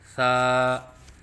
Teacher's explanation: یعنی زبان کی نوک جب اوپر والے سامنے کے دو دانتوں کی نوک سے لگے تو اس سے ثا ادا ہوتا ہے۔ جیسے کہ آپ کو اس نقشے میں نظر آ رہا ہے کہ زبان کی نوک ثنایا علیہ کے کناروں سے لگی ہوئی ہے۔